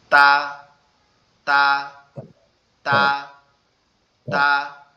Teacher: তা অক্ষরটা আমাদের এই যে জিহ্বার আগাটা, এটা উপরের যে দুইটা দাঁত আছে, এই যে সামনের দুইটা দাঁত, এই দুইটা দাঁতের গোড়ার সঙ্গে লাগবে, অর্থাৎ ভিতরের যে গোড়ার অংশ আছে ওইখানের সাথে লাগবে, লেগে উচ্চারিত হবে তা, তা, তা, তা।